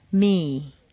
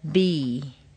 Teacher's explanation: M is the easiest and most obvious like B the lips come together the air can't get out so it has to come through the nose